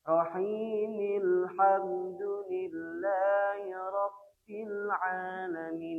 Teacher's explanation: Mimnya itu adalah berharokat kasroh. Maka ketika diwasal ke ayat kedua, ke bacaan hamdalah, maka bunyinya adalah rahimil